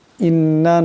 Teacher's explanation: নুন মুসাদ্দাদকে একি পরিমাণ গুন্না করিয়া পড়তে হবে